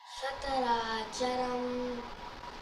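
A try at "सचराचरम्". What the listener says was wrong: That C stands for Cha, no? Amma told, no? Characharam.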